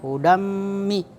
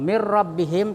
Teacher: Ya, kalau hudammi, itu berdengung, hudammin. Kalau mir rabbihim tidak berdengung